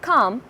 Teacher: The second in this category is back vowels, which are those during the production of which the back part of the tongue is raised towards the soft palate, leaving sufficient space between them so that the air can escape without friction.